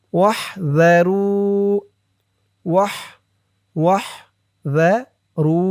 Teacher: রু এক আলিফ টান পেশের পরে ওয়াও সাকিন।